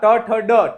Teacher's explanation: टकार ट जो है ट वर्ग में जितने वर्ण आते हैं उनका उच्चारण स्थान मूर्धा होती है